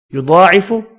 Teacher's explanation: بہت پر پڑھیں گے اور کھڑی زبر کی وجہ سے ایک الف کی مقدار میں کھینچ کر پڑھنا ہے